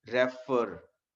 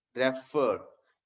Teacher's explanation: अर पे हम स्ट्रेस दे रहे हैं , रेफर, यानी कि उसको हम ज्यादा जोर देके बोल रहे